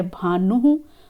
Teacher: ऊ का जो उच्चारण स्थल है वो ओष्ठ होता है, तो वहाँ पर विसर्ग का उच्चारण स्थल भी ओष्ठ ही होगा